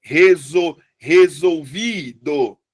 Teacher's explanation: A sílaba mais forte é o vi.